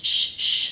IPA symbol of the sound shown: ʃ